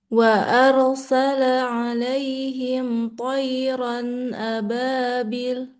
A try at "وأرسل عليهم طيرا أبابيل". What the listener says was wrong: Panjangin. Bil. Ini mat apa nih? Mat apa nih? Ayo, mat apa? Mat apa tuh? Mat apa tuh? Mat?